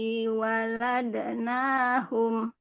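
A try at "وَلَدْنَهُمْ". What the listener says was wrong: Pendek, waladnahum.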